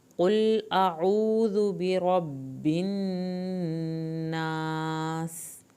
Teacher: برب الناس، را کو پر کریں، برب نون کی شد پہ ایک الف کے برابر دیر لگائیں، ناس الف کو پورا ادا کریں، آخر میں سین پہ سیٹی کی آواز نکلے۔